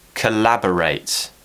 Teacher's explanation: where's the stress it's on lab